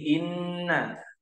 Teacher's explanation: huruf nun tasydid di sini inna. Panjangnya dua harokat serta didengungkan.